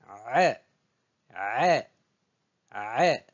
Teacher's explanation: on prononce le A, c'est au fond de la gorge. Je rétrécis le passage de l'air et je pousse.